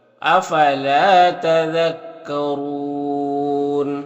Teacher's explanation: افلا لام میں الف مدہ ہے ایک الف کے برابر کھینچیں گے، را کے اوپر زبر ہے، را کے اوپر پیش ہے تو را کو پر پڑھیں گے اور یہاں پر وقف کریں گے تو مد عارض وقفی ہوگا